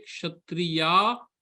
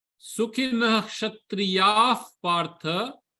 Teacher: When I say kshatriya, that visarga will become ha.